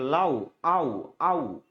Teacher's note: দ্বিতীয় যে স্বরটা আছে এই স্বরটা সম্পূর্ণ উচ্চারণ হয় না। যদি সম্পূর্ণ উচ্চারণ হতো তাহলে আপনি কিন্তু বলতেন কি আচ্ছা আচ্ছা যদি দুইটা স্বর যদি সমান উচ্চারণ হতো মানে একই পরিমাণ উচ্চারণ হতো তাহলে আপনি কিন্তু এটাকে লাউ বলতেন না বলতেন কি? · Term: যৌগিক স্বর